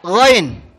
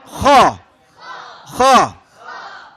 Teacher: tenggorokan bagian atas, yaitu huruf Ghain sama Kha